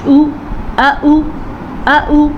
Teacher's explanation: حمزہ زبر آ، حمزہ پیش او، اس سے زیادہ لمبا نہیں کریں گے